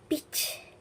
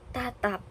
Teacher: Peach itu hembusan udaranya kuat · bunyi hambatnya diucapkan tanpa letupan kuat, contohnya kata tatap. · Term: aspirasi, pelepasan